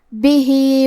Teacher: ہا کے نیچے کھڑی زیر ہے تو یہاں حکم ہے مد صلہ صغرا لہذا ہم اپنی آواز 2 مد کے برابر لمبی کریں گے